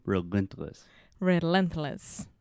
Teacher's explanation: the stress is on the middle syllable, relentless.